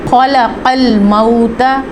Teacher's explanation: خا جو ہے مستعلیہ لیٹر ہے، اس کو ہم نے پر اور موٹی آواز میں پڑھنا ہے، جبکہ قاف بھی مستعلیہ لیٹر ہے، اس قاف میں اور سادہ کاف میں بہت فرق ہے۔